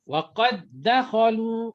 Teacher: dal bertemu dal. Sebab dal yang pertama itu mati, sukun. Bukannya wa qad dakhalu, bukan. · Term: idgham mutamatsilain shaghir